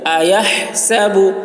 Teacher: ہا کو حلق سے ادا کریں گے